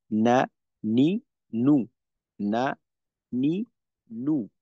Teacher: জিওভার আগা তার বরাবর উপরের তালুর সঙ্গে লাগাইয়ে উচ্চারিত হয় নুন · জিহ্বার আগা তার বরাবর উপরের তালুর সঙ্গে লাগাই উচ্চারিত হয় নুন। তো এখানেও আমাদের সমস্যা হয় না, কারণ আমাদের বাংলায় যে একটা ন আছে, এই দন্ত ন, ওইটার মতোই অনেকটা নুন।